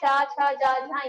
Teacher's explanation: चा वर्ग जो तालु है, चा छा जा झा या, मतलब इसका उच्चारण स्थान होता है तालु।